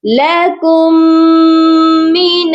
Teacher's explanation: یہاں پر بھی دیکھیں دو میم ہے، ایک ساکن ہے ایک مشدد ہے. ہم ساکن والے کو چھوڑ دیں گے اور کاف کو میم مشدد کے ساتھ ملا کر پڑھیں گے. اور میم مشدد اور نون مشدد پر ہمیشہ غنہ ہوتا ہے، اسی لیے یہاں پر غنہ بھی لازمی کیا جائے گا. · یہاں پر نون کو شین کے ساتھ ملایا، درمیان میں ایک الف تھا اور لام تھا، دونوں خالی تھے، ہم نے اس کو نہیں پڑھا